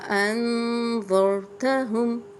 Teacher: انذرتہم، نون پہ جزم ہے اس لیے ہم غنہ کر رہے ہیں۔